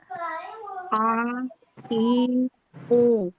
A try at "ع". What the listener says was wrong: Yang kasrohnya Bu ke hamzah, lebih ke hamzah. Yang domahnya kurang.